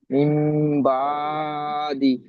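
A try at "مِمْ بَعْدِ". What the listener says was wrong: বা টান হচ্ছে কেন? আরো স্পিড দেখেন, মিম বা, বা, বা দি।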